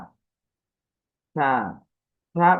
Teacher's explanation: থা উচ্চারণের ক্ষেত্রে আমাদের উচ্চারণের পদ্ধতি ছিল জিহ্বার আগা, দাঁতের আগা, নরম আওয়াজ, কম টান